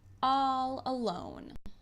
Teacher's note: It's a perfect example of both consonance and assonance, since we get the repetition of the consonant L sound and the vowel ah sound.